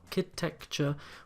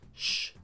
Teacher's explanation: notice the word architecture in english of course this is our kid texture with a k sound but in french it is still pronounced shh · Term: sh sound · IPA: [ʃ]